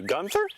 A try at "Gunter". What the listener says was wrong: It's Gunter, no H. Trust me, it's Gunter.